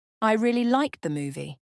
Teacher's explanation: emphasis on liked focuses attention on the action the fact that you liked it